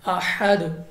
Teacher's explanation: دال حروف قلقلہ میں سے ہے، تو یہاں پہ آپ نے واپس لوٹتے ہوئے کے ساتھ دال کو پڑھنا ہے